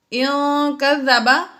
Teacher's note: نون ساکن کے بعد کاف آ گیا حروف اخفا میں سے اس لیے یہاں پر ہم نے غنہ کیا